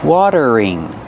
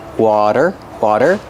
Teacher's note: the t is a fast d water water then use a voice R together watering watering this